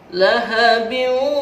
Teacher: Kalau dimasukkan dalam istilah tajwid disebut idgham. Idgham bi gunnah, memasukkan dengan dengung dan ditahan.